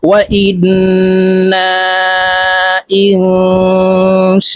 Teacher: মদের হরফের উপরে মোটা চিহ্ন, বামে হামজা, মধ্যে মুত্তাসিল, চার আলিফ টানিয়া পড়িতে হয়, তাই এই শিনকে চার আলিফ টেনে পড়ব।